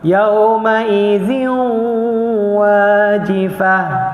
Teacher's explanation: Bagi masa dia 2 harakat setiap dengung. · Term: idgham ma'al gunnah